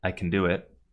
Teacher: Can becomes cn like “I c’n do it”. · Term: weak form